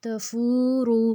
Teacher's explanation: تفور، اب تا کو ہم نے بالکل بھی نہیں کھینچا، فا کے اوپر جو پیش ہے اس کے آگے جو واو ہے، واو کے اوپر جزم ہے، جس کی وجہ سے وہ یہ واو مدہ بنے گا، اس کو ہم فو کو جو پیش ہے اس کو ہم کھینچیں گے 2 حرکت لمبا